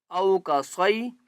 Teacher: حمزہ واو زبر او کا، صاد یا زبر صی، صاد کو موٹا کر کے پڑھیں گے